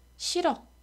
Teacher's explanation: 않죠 싫어 자 원래대로라면 ㄹ을 음절말에 남기고 히읗이 여름 되어야 하지만 실제로는 히읗이 그대로 탈락하고 ㄹ이 연음 됩니다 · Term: 히읗 탈락